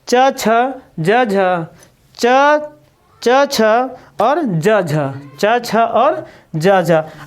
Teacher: स्पर्श और संघर्षी व्यंजन होते हैं वो कौन कौन से होते हैं, च छ ज झ